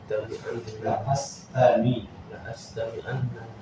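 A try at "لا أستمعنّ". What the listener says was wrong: lam di sini lam pendek bukan lam panjang. La astami'anna an-nasihata. La astami'anna an-nasihata.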